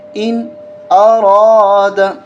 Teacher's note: اس نون پہ بھی غنہ نہیں ہوگا اس لیے کہ اس نون ساکن کے بعد حروف حلقی حمزہ ہے